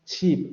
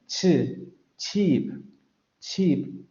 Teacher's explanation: Y la articulación aquí se descubre en el último fonema, porque no sería una alveolar, sino una postalveolar. El momento de la oclusión empieza en los alveolos, pero el fonema se articula en la parte de los postalveolos. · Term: africada sorda postalveolar